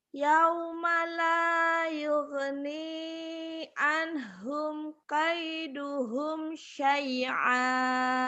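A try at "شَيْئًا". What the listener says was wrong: Jangan ke ain. Syai'a, ari. Syai'a. Yauma la yughni anhum kaiduhum syai'a.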